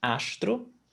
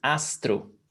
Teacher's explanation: when you have the s before a t in some places in brazil in some accents it's pronounced with the sh sound